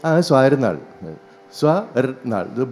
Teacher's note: When a Malayali says his name, he says, Swarnal. Swarnal. Both the T's are gone.